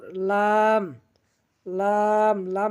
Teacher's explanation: জিহ্বার আগার কিনারা সামনের উপরের দাঁতের গোড়ার সঙ্গে লাগাইয়া লাম, লাম